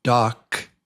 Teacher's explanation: you don't hear any vibration on the k. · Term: no vibration